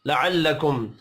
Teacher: میم ساکن کے بعد تا ہے یہاں پر بھی اظہار شفوی ہوگا غنہ نہیں ہوگا